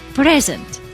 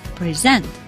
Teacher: if I pronounce the first syllable with stress, I say present, then it is a noun. If I say present, I stressed the last syllable, the second syllable, present, then it is a verb, and it means to give a present to somebody or to present a lecture, for example. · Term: stress pattern